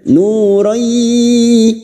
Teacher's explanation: Nu dhamma diikuti wawu sukun 2 harokat mad tabi'i